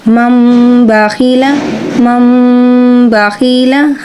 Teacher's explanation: ہم میم کی ساؤنڈ کو پڑھے ہیں تو یہ اقلاب ہے